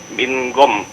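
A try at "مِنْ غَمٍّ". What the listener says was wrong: Hukumnya apa? Nun ketemu ghain? Izhar ya. Nah, makanya jangan ming. Kalau ming berarti menjadi ikhfa ya. Tapi izhar min gham, jangan ditahan ya.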